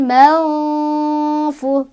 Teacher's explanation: Cara bacanya nunnya dibaca samar sambil berdengung pas menuju huruf fa. Jadi bibir kita sudah siap-siap ketika mengucapkan huruf nun, udah siap-siap ke fa. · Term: ikhfa ausat